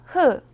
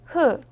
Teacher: 흐는 목구멍에서 바람을 밖으로 내며 나는 소리입니다